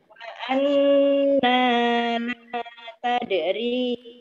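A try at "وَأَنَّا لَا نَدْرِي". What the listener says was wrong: Nadri bukan tadri, nadri titiknya satu.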